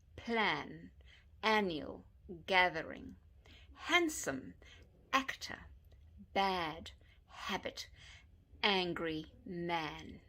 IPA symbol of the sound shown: æ